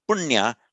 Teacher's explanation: that dot under the end means it's a retroflex n